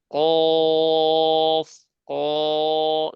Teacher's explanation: ততি তু আমরা কফ উচ্চারণ করার সময়, কফ উচ্চারণের সময় আমরা বলি যেরকম কফ, ক, জিবার গোড়াটা উপরে তালুতে লেগে যায়, আর জিবার মাঝখানটা গর্ত হয়ে যায়